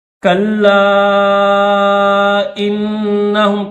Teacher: تشدید والا حرف جہاں پر بھی آئے گا تو اس کو سختی کے ساتھ پڑھتے ہیں۔ کلا انہم، کلا کو میں نے اس وجہ سے کھینچا ہے کہ کیونکہ اس کے اوپر مد منفصل ہے، چھوٹی مد ہے تو اس کو 3 سیکنڈ کھینچیں گے